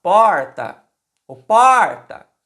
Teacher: No caso da palavra porta, a sílaba tônica é o por, é a primeira sílaba da palavra.